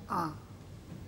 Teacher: মুখবিবর সম্পূর্ণভাবে উন্মুক্ত হয়ে গেল, সম্পূর্ণভাবে, তার মানে বিবৃত হয়ে গেল। তাই আ স্বরধ্বনিটিকে আমরা বলছি বিবৃত স্বরধ্বনি।